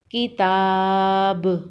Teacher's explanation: وقف کی صورت میں با پر قلقلہ ہوگا